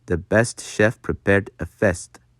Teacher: make it more like the short E in bed rather than the long A sound